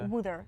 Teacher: you kind of don't really pronounce the h there